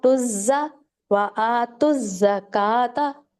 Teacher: آتو زکا نہیں پڑھنا، اس کو زا کو زور دیں. تز زکا، ایک تز میں کیا ہے زا ساکن، اور زکا میں کیا ہے زا زبر. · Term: تشدید